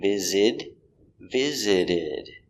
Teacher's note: i visited visited the s is pronounced as a z visit the t is pronounced like a d